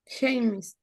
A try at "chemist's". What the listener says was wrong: Well, I think it's chemists, right? So chemists, porque lleva una apostrophe S al final.